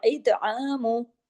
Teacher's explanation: तो को हैवी और तो पे कलकला भी होगा